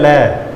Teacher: हवा जीभ के दोनों हिस्सों से बाहर आती है